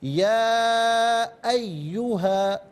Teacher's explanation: یہ مد متصل ہے، اسے 4 سے 6 الف کی مقدار کھینچ کر پڑھنا لازمی ہے۔